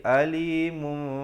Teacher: Bibir itu sekadar bersentuhan saja dengan kadar panjang dua harakat. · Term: iqlab